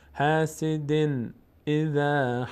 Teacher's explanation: قلقله میشه از اون پنج حرف هست قاف تا با جیم دال وقتی ساکن باشن روشون توقف بکنیم مقداری در مخرج می‌لرزد · اینجا تنوین بعدش همزه آمده، اینجا اظهار میشه، نون از مخرج خودش ادا میشه